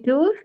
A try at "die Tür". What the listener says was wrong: Again, you are saying tour. Don't make this mistake. tour. say the R part.